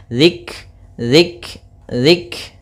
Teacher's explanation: kafnya ini punya sifat namanya sifat Hamas yaitu aliran nafas kita